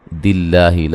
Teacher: لفظ اللہ کو باریک پڑھا جائے گا، اس سے پہلے زیر ہے